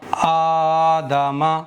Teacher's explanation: حمزہ کھڑا زبر آ، دال زبر دا، آدا، میم زبر ما، آدما۔ دال پر پڑا زبر ہے، میم پر بھی پڑا زبر ہے، دونوں کو جلدی پڑھیں گے، کھینچیں گے نہیں، لیکن حمزہ پر کھڑا زبر ہے تو حمزہ کو کھینچیں گے